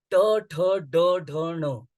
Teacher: उसके बाद मूर्धन्य मतलब फ्रंटल रीजन, हार्ड पैलेट। तो हमारी टंग जब दांत के थोड़े से ऊपर फ्रंटल रिज और पैलेट को जब टच होती है, तभी इन अक्षरों का हम उच्चारण कर सकते हैं